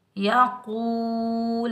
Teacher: اوپر پیش، کاف کو ہم واو ساکن کے ساتھ ملائیں گے، یہ واو مدہ ہے، اس کو ہم ایک الف کی مقدار میں کھینچ کر ادا کریں گے ۔ یقول، لام کے اوپر پیش، بغیر کھینچے پڑھیں گے لو،